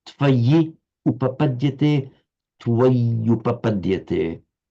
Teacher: So by the normal rules of sandhi, which we see operating here, tvayi, in you, upapadyate, we've got a word ending in an I that I've just highlighted here, where the cursor is, followed by u, so that I, the final vowel I, has to become a y because of the following u, and that creates a double y